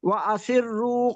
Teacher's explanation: وَأَسِرُّوا میں جو را ہے مفخم ہوگی